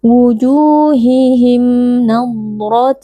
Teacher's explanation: sukun bertemu dengan huruf nun hukumnya adalah izhar syafawi cara membacanya mim sukun dibaca dengan jelas tanpa berdengung · huruf doad memiliki sifat rohhawah jadi ketika sukun Huruf dad kita berikan sedikit aliran suara